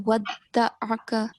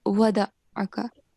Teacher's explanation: On the letter Dal, we have Shad, this little sign which looks like W. So you have to stress on Dal, and it will sound like a double letter.